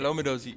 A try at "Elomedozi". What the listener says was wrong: You have to say it all at once. It's all one name.